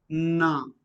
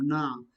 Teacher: Alveolar. Just behind the teeth. Na, tongue touches alveolum.